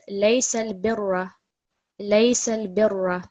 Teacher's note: the ra which is carrying the fatha, it's a thick ra